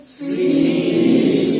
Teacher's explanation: یا ساکن ہے پیچھے زیر ہے تو آواز 1 الف ہے